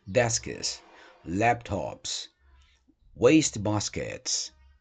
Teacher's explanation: pode pronunciar esse S final como s mesmo sem problema nenhum